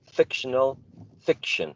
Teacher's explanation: in both fiction and fictional, the first is the stress